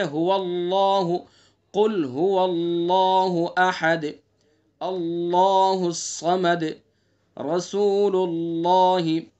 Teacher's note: اللہ کے لام سے پہلے زبر اور پیش، ان دونوں حرکتوں میں سے کوئی بھی حرکت ہوگی، زبر کی ہو یا پیش کی ہو، تو اللہ کا لام پر پڑھا جاتا ہے، یعنی منہ بھر کے پڑھیں گے، موٹا کر کے پڑھیں گے، جیسے هو اللہ، قل هو اللہ احد، اللہ الصمد، رسول اللہ۔